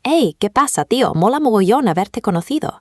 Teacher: The accent is sharp, loud, and incredibly fast. The syllables blur together.